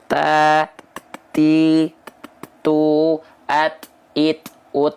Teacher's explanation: hamsnya kadarnya Hanya berupa percikan saja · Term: sifat hams